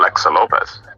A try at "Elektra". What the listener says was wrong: Elektra, not Alexa. Elektra. Like Carmen Electra.